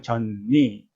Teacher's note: 젖니, 니가 비음이기 때문에 젖이 전으로 바뀝니다.